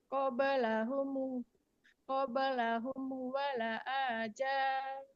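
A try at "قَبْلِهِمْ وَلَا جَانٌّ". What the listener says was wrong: Bukan wala'a, tapi walajan. Qablahum walajan.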